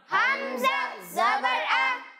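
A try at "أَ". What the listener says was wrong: अच्छा हमज़ा में झटका नहीं देना। ठीक है, आ नहीं, आ आ आ।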